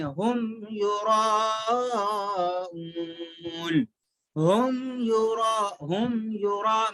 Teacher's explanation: ہم، ہم میم ساکن کے بعد نہ تو میم ہے نہ تو با ہے، تو ہم نہیں پڑھیں گے، ہم یراؤون، ہم یرا میم کو ناک میں نہیں چھپانا ہے